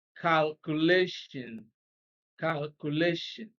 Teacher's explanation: stress is on the second syllable before the last one